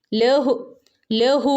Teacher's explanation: കൂട്ടി ചേർത്ത് ഓതി പോവുകയാണെങ്കിൽ ലഹു എന്ന് 5 അനക്കം നീട്ടി ഓതി കൊടുക്കുക